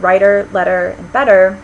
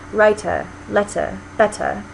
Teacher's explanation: If you listen to them carefully, writer, it may sound like we're pronouncing them with a D, but it's actually not a full D sound either. Your tongue, when you say those words, is just sort of glancing off the roof of your mouth. It's not really making a full stop consonant. And that flap, let's see if I can point. · in this received pronunciation, they do not flap their T's in those words. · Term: full T